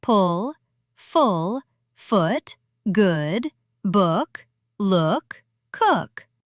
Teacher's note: Short OO. Quick, loose lips.